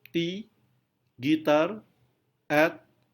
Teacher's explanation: Saat kita mengucapkan T, tidak ada getaran di pita suara. Itu sebabnya dia disebut sebagai voiceless. · T adalah voiceless alveolar plosive. T. Saat kita mengucapkan T, tidak ada getaran di pita suara.